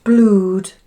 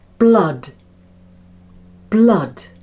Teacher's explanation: those two O's together have the sound ah, like in mud